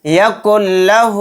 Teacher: ادغام بلا غنہ ادغام لام کا قاعدہ ہو رہا ہے، یعنی کاف کو لام میں جلد ملا کر پڑھیں گے، غنہ نہیں کریں گے